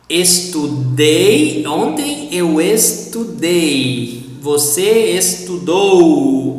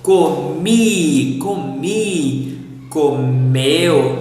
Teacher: the pronunciation of past tense verbs for singular pronouns has to stress on the last syllable